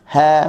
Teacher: Huruf ha halqum bawah sekali. Ha, buka mulut sambil nak senyum.